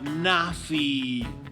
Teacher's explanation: Notice how the I in Nafi has that long E sound.